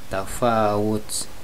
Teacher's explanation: bila wakof huruf ta'nya terdengar hamas